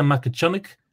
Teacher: We would pronounce it as Makachunny. You might say Makachunik down in Kerry, yeah, the harder G at the end.